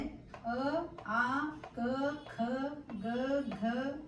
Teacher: ನಾಲಿಗೆಯ ಹಿಂಭಾಗ ಕಿರು ನಾಲಿಗೆ ಎಡೆಗೆ ವಾಲಿದಾಗ ಉಂಟಾಗುವ ಧ್ವನಿಗಳಿಗೆ ಕಂಠ ಧ್ವನಿ ಎನ್ನಲಾಗುತ್ತದೆ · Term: ಕಂಠ ವರ್ಣಗಳು